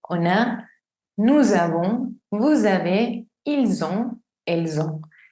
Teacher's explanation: Entonces aquí sí es on a, esa n toma sonido. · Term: liaison